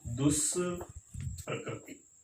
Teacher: तो जो विसर्ग है वो मूर्धन्य स में बदल जाता है। उदाहरण देखिए, दू प्लस प्रकृति, तो यहाँ पर दू में क्या है, ऊ की मात्रा है, और उसके बाद अपन कह रहे हैं प या फ में से हो, तो यहाँ पे प आया है, तो शब्द क्या बनेगा, दुष्प्रकृति, शब्द बना दुष्प्रकृति।